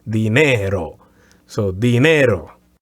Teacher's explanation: Dinero, as opposed to dinero. And the accent is going to be on the E sound, on the second syllable.